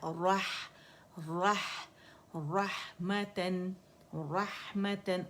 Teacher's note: रा के साथ हा को मोटा नहीं करेंगे